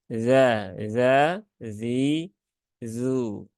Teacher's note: huruf dalal ini dia ujung lidah di gigi seri atas ya ujung lidah ee menuju gigi dari atas